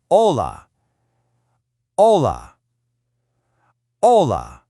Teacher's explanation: In Spanish, the H is absolutely always silent, so it's hola, not H-ola.